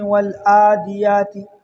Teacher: غلطی کرتے ہیں لوگ، یہاں پر عین کی جگہ حمزہ پڑھتے ہیں